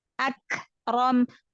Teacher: tahan dulu suaranya ya di makhraj huruf kaf, baru lepaskan udaranya atau nafasnya. Jadi tahan dulu, baru lepaskan. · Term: Kaf sukun